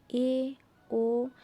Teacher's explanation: এই স্বরধ্বনি দুটি উচ্চারণের সময় জিহ্বা উচ্চ স্বরধ্বনির উচ্চারণ স্থান থেকে একটু নিচে অবস্থান করে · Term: উচ্চ মধ্য স্বরধ্বনি